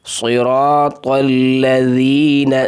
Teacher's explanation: تشدید کو سختی کے ساتھ اور رک کر ادا کرنا ہے، ذال کو نرم کرنا ہے۔ صراط الذین، زین، ذال کی جگہ زا نہیں پڑھنا۔